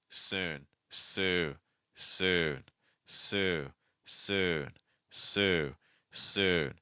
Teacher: don't add the N sound too soon · I have to finish my vowel first, and then I add my N sound. I have to do that.